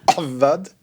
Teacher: il faut la gutturale, ça part avec la gorge